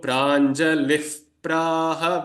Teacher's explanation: whenever pa or pha follows the visarga changes into a mild fa sound